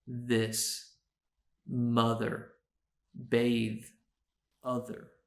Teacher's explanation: we make in English a voiced and an unvoiced th sound in the voiced sound you can hear the speaker's voice in addition to the th sound